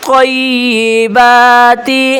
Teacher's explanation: حرم زینۃ اللہ التی، تاللہ التی اخرج لعبادہ والطیبات، دیکھیں تو آ کے اوپر تشدید ہے، یا کے اوپر، تو دونوں کو سخت کریں گے، اور با کے اوپر کھڑا زبر ہے تو اس کو 1 الف کی مقدار کھینچیں گے